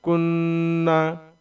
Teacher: کاف نون پیش کن، نون زبر نا، تو چونکہ نون کے اوپر میں تشدید ہے اس لیے ہم یہ غنہ بھی کریں گے · کننا، نون زبر نا، کننا. نون کے اوپر تشدید ہے تو ایک بار کاف کے ساتھ ملا کے پڑھیں گے اور ایک بار خود نون کو پڑھیں گے. کاف نون پیش کن، نون زبر نا، کننا.